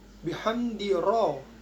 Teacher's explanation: ro di sini dibaca tafkim yaitu tebal. Sebab berharokat fathah.